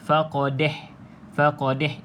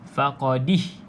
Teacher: dia condongkan bunyi Dal baris bawah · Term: imalah